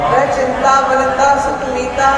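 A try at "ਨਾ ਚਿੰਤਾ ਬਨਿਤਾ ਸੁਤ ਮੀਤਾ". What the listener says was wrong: ਹਾਂਜੀ ਨਾ ਪੜਨਾ ਇਹਨੂੰ ਹਲਕਾ ਜਿਹਾ ਨਾ ਨੈ ਨਹੀਂ ਪੜਨਾ ਨਾ ਚਿੰਤਾ ਬਣਤਾ ਸੁਤਮੀਤਾ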